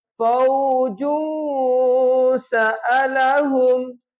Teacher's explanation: یہاں پہ اخفا کریں گے، آواز کو ناک میں لے کے جائیں گے لیکن زبان تالو سے ٹچ نہیں کرنی۔